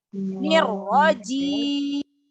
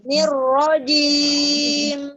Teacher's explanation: Mim sukun, mim itu mempunyai sifat tawassut ya, mengalirnya suara. Jadi jangan langsung ditahan. Nirrojim. Ada terakhir dikit.